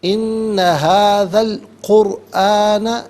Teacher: را ساکن ما قبل کاف پر پیش ہے، را ساکن کو پر کر کے پڑھا جائے گا۔